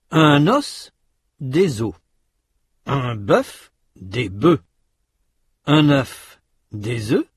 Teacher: Notez que dans ces mots, la consonne finale, ou semi-voyelle finale dans le cas de œil, prononcée au singulier, n'est pas prononcée au pluriel